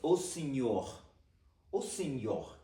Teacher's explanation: when you have an R at the end of a sentence, you kind of do it with a ch sound in the back of your throat